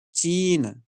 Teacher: इसी को मैं अगर लंबा खींच करके बोलता तो होता चीन। So this is the difference between unstressed and stressed.